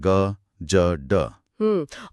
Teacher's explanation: गले की स्वर तंत्रियों में कंपन होता है, वाइब्रेशन होता है